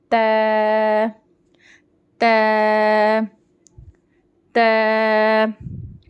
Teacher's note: इसको भी त नहीं कर देना ये बारीक पढ़ना है त जुबान की नोक ऊपर के दांतों के जड़ों को लगाकर पढ़ेंगे · تھرڈ تے, اس کو بھی تو نہیں کر دینا, یہ باریک پڑھنا ہے. تے زبان کی نوک اوپر کے دانتوں کے جڑوں کو لگا کر پڑھیں گے